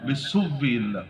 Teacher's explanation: حمزہ کا واو سے ابدال اور واو کا واو میں ادغام